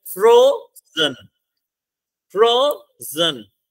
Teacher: similarly आप फ्रोजन में आ जाओ, फ्रोजन में दो सिलेबल्स है, आप बोल के देख लो, फ्रोजन, फ्रोजन, क्लियर, फ्रो हमारा स्ट्रेस्ड है, जन हमारा अनस्ट्रेस्ड है